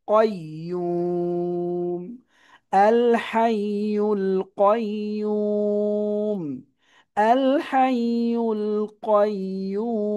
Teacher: এক পেশে থামলে সাকিন হবে, এর আগে এক আলিফ মাদ আছে, এটা তিন আলিফ দিয়ে দিতে হবে।